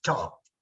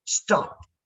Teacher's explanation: So you see, in a word like, look at the two words you are writing here, stop, and the other word is top. So top, ta can be aspirated, and in the word stop, ta does not have to be aspirated. So if I want to do it, I should not be speaking like stop, stop.